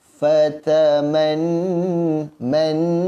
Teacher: Kemudian seterusnya fataman man nun bersabdu, maka ingat formulanya nun bersabdu wajib dengung dengan kadar dua harakat